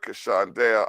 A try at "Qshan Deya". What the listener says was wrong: Just stress the Q more. Qshan.